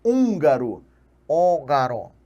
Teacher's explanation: aquele N vai transformar o U em uma vogal entendida diretamente como uma vogal necessariamente nasalizada